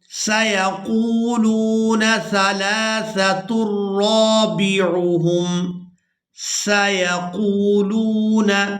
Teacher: یہاں قاف کو واو مدہ کی وجہ سے اور لام کو بھی واو مدہ کی وجہ سے کھینچ کر ادا کریں گے۔